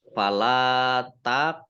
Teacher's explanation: Qaf sukun bacaan kolkolah ya dibaca memantul ditampakkan pantulannya.